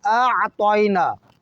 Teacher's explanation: متوجہ رہیں اس بات کی طرف کہ جب بھی کوئی حمزہ اور عین کے تلفظ کو ادا کرنا چاہے، اس چیز کا خیال رکھنا ضروری ہے کہ یہاں پہ جیسے سورہ کوثر میں حمزہ متحرک ہے اور عین ساکن ہے، تو لہٰذا پہلا آ پڑھیں گے حلق کی ابتدا سے اور حلق کی سٹار سے آ، اور اس کے بعد عین کو وسط حلق اور عین کو ساکن پڑھیں گے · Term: حمزہ متحرک، عین ساکن